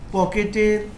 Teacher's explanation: পকেটের প টা হলো অঘোষ অল্পপ্রাণ ধ্বনি